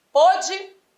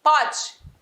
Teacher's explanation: Pô de timbre fechado. Pó de timbre aberto. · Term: diferencial de timbre